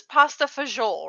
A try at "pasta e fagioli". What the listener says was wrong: 3 words. It's 3 words in Italian. It's pasta e fagioli, and fagioli just means beans.